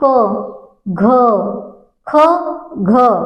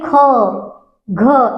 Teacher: आप बोल के देखिए ख, घ, एक सांस आपकी निकल रही है तीव्र उसमें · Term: महाप्राण